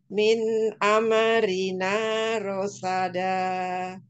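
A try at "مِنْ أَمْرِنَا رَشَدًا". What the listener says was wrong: Baik, huruf mimnya, umi bibirnya ditempelkan aja ya, biar tidak ame. Tapi tempelkan, jangan langsung dibuka, sempurna dulu mimnya. Min amrina.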